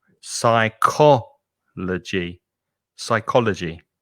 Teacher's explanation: the p is silent and the stress is on the second syllable